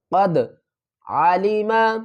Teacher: قد دال کے اوپر قلقلہ کریں گے، دال ساکن ہے